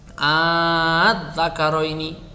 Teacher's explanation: Kalau ibdal itu hamzah yang kedua itu dibunyikan dengan bunyi alif, sehingga dengan hamzah yang sebelumnya itu menjadi bacaan mat, menjadi bacaan panjang.